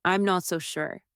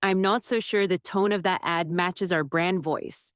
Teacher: Let your tone fall, not rise.